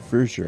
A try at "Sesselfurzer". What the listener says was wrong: There's a Z in there, by the way. Furzer. Zer.